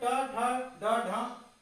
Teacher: और जो मूर्धन्य होता है तो मुंह के ऊपर वाला हिस्सा जहां जीभ टकराती है सामने, अग्रभाग, उसे बोलते हैं मूर्धन्य, जिसमें ट ठ ड ढ न आता है।